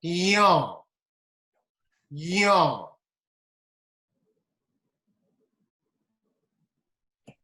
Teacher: The last one is nasal again. It is palatal, but then nasal in it.